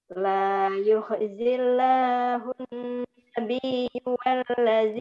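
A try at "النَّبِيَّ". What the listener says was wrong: Nabiyya bukan nabiyyu, nabiyya.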